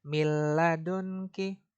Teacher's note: Nah, yang kita bahas ini nun mati bertemu dengan huruf lam di sini ya. Jadi nunnya nggak dibaca, langsung masuk dan tidak berdengung. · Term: idgham